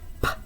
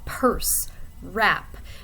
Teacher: the vocal tract is closed completely, but for stops, the airflow is not redirected through the nose. Instead, you get a little bit of air pressure in your mouth, and then it releases, kind of like a small explosion.